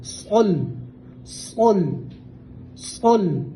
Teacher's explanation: صاد کو پور پڑھیں گے اور لام کو باریک پڑھیں گے